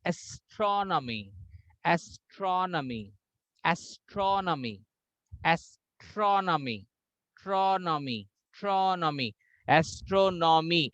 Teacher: when you say astronomy, tro will have more high pitch, but when you say astronomical, then nomical will have more emphasis.